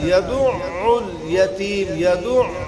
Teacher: عین جو ہے یہاں پر مشدد ہے تو اس کو صاف ادا کرنا ہے. یدع الیتیم، یدع، یعنی حرف مشدد جو ہوتا ہے ایک ہی الفاظ کے حکم میں ہوتا ہے.